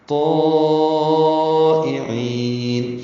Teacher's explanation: طائعین 4 حرکات سے زیادہ لمبا کیا، حمزہ یا کی شکل میں ہے، جلدی پڑھیں گے. عین کو وسط حلق سے ادا کرتے ہوئے لمبا کریں گے. وقفاً مد عارض السکون ہے اس لیے لمبا کیا ہے، اور نون ساکن پہ اظہار ہوگا. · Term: مد متصل